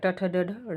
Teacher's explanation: जिन व्यंजनों के उच्चारण मूर्धा से होता है इस प्रक्रिया में जीभ मूर्धा को स्पर्श करती है। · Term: मूर्धन्य